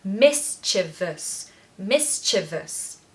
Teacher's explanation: syllable mischievous achieve us so stress the first part and then there's a schwa on the end · we say in British English so the pronunciation is Miss so the stress is on the first syllable